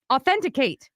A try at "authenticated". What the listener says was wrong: No, but it's not authenticate because I could have done authenticate. There was a little more to authenticate. Authenticated. Authenticated.